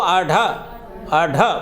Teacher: उच्छिप्त व्यंजन किसे कहते हैं, उच्चरित होते समय जब हमारी जिह्वा की नोक मूर्धा को स्पर्श करके झटके से नीचे की तरफ गिर जाती है तो उच्छिप्त व्यंजन या द्विगुणी व्यंजन उच्चरित होते हैं। · उत प्लस क्षिप्त, तेजी से ऊपर की तरफ उठना और गिर जाना, इसे उच्छिप्त व्यंजन कहते हैं